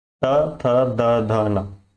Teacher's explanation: हमारा जीभ हमारे दांत से टच होता है। त थ द ध न हमारे दांत से टच होता है, इसलिए हम इसे बोलेंगे दंतव्य।